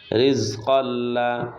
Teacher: জজমওয়ালা হরফ ডান দিকের উচ্চারণের সঙ্গে একত্রে একবার পড়তে হয় রিজ কফে দুই জবর তানবিনের বামে লাম ইদগামে বেলা গুন্না ছাড়া মিলিয়ে পড়তে হয়